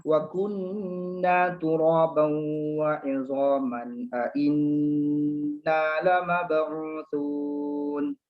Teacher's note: nun syaddah dan mim syaddah itu wajibul gunnah. Dia tidak ada kompromi. Dia mandatory, wajib dengung.